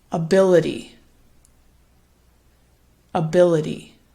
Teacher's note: it gets a bit louder and longer on that second syllable. Now this is a very interesting word because actually the first syllable, instead of ability, it gets reduced to something called a schwa.